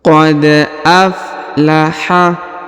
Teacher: Huruf dal berharokat sukun, maka kita pantulkan atau kita qalqalahkan.